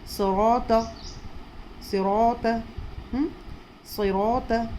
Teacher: اور طا بھی موٹے صفت والا حروف ہے اس لیے موٹا، بہت موٹا اور بہت اونچا. صاد بھی بہت موٹا اور بہت اونچا، اور را بھی موٹا اور طا بھی بہت موٹا بہت اونچا